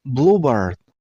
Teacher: Stress on the first syllable. I mean on blue sound.